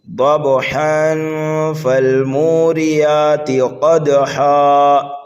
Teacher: یعنی نون ساکن یا تنوین کی آواز کو ناک میں چھپا کر کے پڑھا جاتا ہے، یعنی کہ گنہ ہی کر کے پڑھا جاتا ہے۔ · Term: اکفا